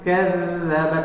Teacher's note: zaknya termasuk sifatul huruf rakhawah. Jadi bacanya mengalir.